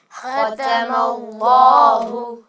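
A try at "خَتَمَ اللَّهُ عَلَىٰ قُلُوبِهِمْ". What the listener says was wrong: یہاں پر اللہ کا جو نام ہے اس میں لام کو آپ نے موٹا کر کے پڑھنا ہے. ختم اللہ علی قلوبہم. جی بیٹا اللہ کا لام سب سے موٹا پڑھا جانے والا حرف ہے.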